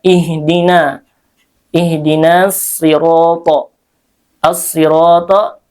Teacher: As-sirata alif lamnya syamsiyah sehingga dibaca idgham. Ro di sini dibaca tafkhim karena berharokat fathah, dan dibaca tebal ya. Ro panjangnya 2 harokat karena ada alif di situ, dan ro fathah.